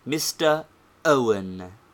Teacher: the educated make a breathing pause and say mr owen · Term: hamza